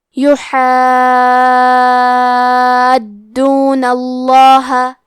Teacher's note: لفظ الجلالہ کے لام کا حکم ہے تفخیم تو ہمیں حرف اللام کو موٹی آواز میں پڑھنا ہے